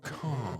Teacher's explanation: all you have to do to produce the British R is not to produce it at all, but instead make the vowel in front of it really long